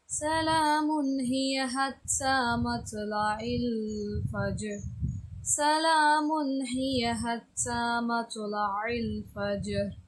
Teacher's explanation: இந்த இடத்துல சலாமுன்னு சொல்லிட்டு குன்னா கொடுக்கூடாது. சில பேர் இந்த தப்பாக பண்ணுறாங்க.